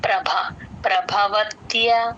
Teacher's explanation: ప కింద రకారం భ కి మహాప్రాణం ఉంది